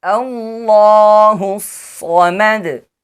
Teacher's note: In the case of stopping on letter dal, qalqala will be applied. · The letter Sad should be pronounced with heavy sound due to the shadda. It should be held slightly while reciting and whistling sound will be pronounced as it among the sibilant letters.